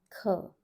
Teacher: This has an aspirated h sound coming from your throat.